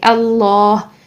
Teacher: اسم جلالہ کو ہم یہاں پر موٹا ادا کریں گے اللہ، ٹھیک، اللہ نہیں کریں گے، ٹھیک ہے.